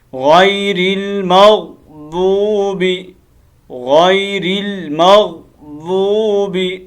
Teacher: connect کرنا ہے، مغضوب، ضاد کو لمبا کرنا ہے، ٹھیک ہے، ضاد کے بعد واو ہے نا، اس واو کو لمبا کرنا ہے